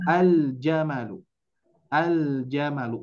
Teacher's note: Lamnya terbaca, ja-nya juga terbaca. Maka disebut idhar qamariyah.